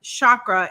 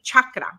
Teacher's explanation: it's a matter of preference but um this this past weekend I was taught that it is a hard CH sound not a soft sh sound